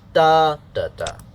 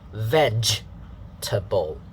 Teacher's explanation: The first syllable is stressed with a higher pitch. Second syllable, unstressed with a lower pitch. Third syllable, unstressed with a lower pitch.